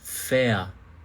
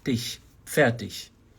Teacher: Porque R está antes de consoante. Então R antes de consoante ou no final de palavras, na maioria das vezes, soa como A. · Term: R com som de A